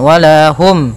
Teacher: Wala, kemudian hum ketemu ya, yunqadun ada bacaan izhar syafawi, yaitu mim mati bertemu dengan huruf ya, maka harus jelas suara mimnya, tidak boleh tahan.